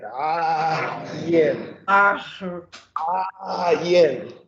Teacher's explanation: it's a sound that's made in the very back of the throat. It sounds a bit like a growl, and academically, it's also represented by a backward apostrophe because there's no equivalent for it. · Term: Ayin